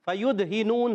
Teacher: कलकला करेंगे आवाज लौट कर आएगी